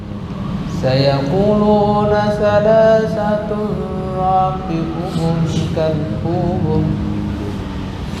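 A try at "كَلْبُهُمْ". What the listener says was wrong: Ngasih kepanjangan dikit di ba. Satu harokat aja. Kalbuhum, bukan kalbuhum. Nah, itu kepanjangan. Kalbuhum. ukuran tempo panjangnya sama ya. Sayaquluna, ku ama lu sama temponya.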